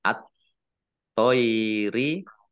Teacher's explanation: thnya ada tasdidnya thnya dibaca dobel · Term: Idgham Syamsiah